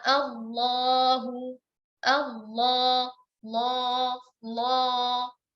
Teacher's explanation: Pangkal lidah kita saat kita ucapkan Allahu itu menebal. Pangkal lidah kita itu naik ke atas sehingga suaranya menjadi lebih meninggi dan lebih besar dan lebih berat ya, dan lebih tebal. Nah, inilah yang dimaksud dengan isti'la. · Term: lam al-mufakhamah